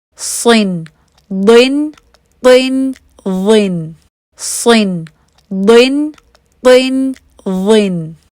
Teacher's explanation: صاد، ضاد اور طا اور ظا کی کسرتین میں بھی خاص خیال رکھنا ہے کہ اس میں آپ کی زبان پیچھے سے اٹھے اور زبان کے بیچ میں کرو آئے